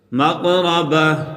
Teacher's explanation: وقف کی صورت میں ہا پڑھا جائے گا اور تا نہیں پڑھا جائے گا۔